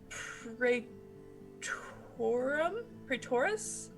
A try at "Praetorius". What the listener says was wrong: It's close, yeah. You have the first, like, syllable. You're missing, like, a syllable. You got the beginning and the end correct.